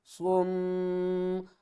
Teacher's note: کس طرح، صاد میم پیش سم، صاد کو موٹا بھی پڑھیں گے اور میم کے ساتھ ملا کر غنہ بھی کریں گے